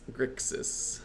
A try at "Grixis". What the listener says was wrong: You say Grixix. No, you just omit the X.